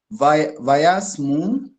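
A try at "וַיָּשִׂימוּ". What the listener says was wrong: Careful not to miss the chirik.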